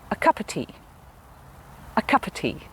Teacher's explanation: say ah and of because those are not the stressed words cup and tea are the important words i would say those clearly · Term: schwa sound